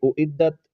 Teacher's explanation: والحجارہ اعدت للکافرین، اعدت، حمزہ اور عین کو واضح کر کے پڑھیں گے، عین کو حلق کے درمیانی حصے سے ادا کریں گے